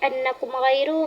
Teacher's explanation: Jadi pada kalimat annakum ghairu mim mati berjumpa dengan gim hukum bacaannya jelas dan tidak boleh didengungkan dikarenakan gin termasuk kepada huruf izhar syafawi. Mim mati berjumpa dengan gin hukum bacaannya jelas. Jadi pada kalimat annakum ghairu dijelaskan bacaannya tidak boleh didengungkan karena itu idhar syafawi.